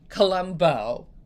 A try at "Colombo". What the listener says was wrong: No, soft on the O.